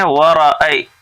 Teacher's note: वाव के ऊपर भी ज़बर है, रा के ऊपर भी ज़बर है, तो इन दोनों को जल्दी पढ़ेंगे. वरअय यहाँ देखिए या साकिन से पहले ज़बर है इसलिए यहाँ पे या लीन हुआ.